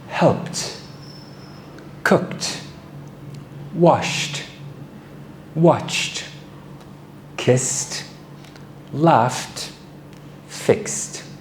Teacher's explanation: These are sounds that involve air, but you cannot feel a vibration in your throat. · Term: voiceless sounds